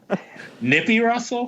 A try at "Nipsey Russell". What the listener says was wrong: Nipsey. Nipsey, not Nippy.